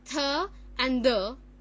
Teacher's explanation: here further we have dental sounds now what are dental sounds Dental has the articulators as the tip of the tongue and the upper teeth